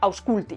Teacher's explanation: Esta U es como la W del inglés, es decir, una semivocal o semiconsonante para formar diptongos, como la U nuestra que tenemos en la palabra guapo.